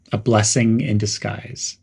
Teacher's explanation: There's a slight pause after blessing and make disguise sound smooth. Dis in disguise is short, and guise in disguise is a bit longer.